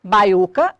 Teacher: a sílaba tônica é o U, forma hiato tônico com o I anterior. Eu tenho um caso de hiato, está formando sílaba sozinho, mas não recebe acento gráfico.